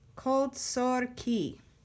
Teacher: It is an unaccented closed syllable, and it is pronounced o, even in Sephardi Hebrew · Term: kamatz katan